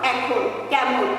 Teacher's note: সাধারণত আদ্য একারের পরে অ এবং আ থাকলে একারের উচ্চারণ বিবৃত হয়, কিন্তু ওই অ কিংবা আ এর পরে যদি ইকার কিংবা একার থাকে, তাহলে সেই স্বরধ্বনিটা কিংবা একারের মতো উচ্চারিত হবে।